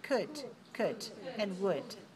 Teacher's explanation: could and would have L in writing, but don't pronounce the L. Don't say cold, just say could, and would.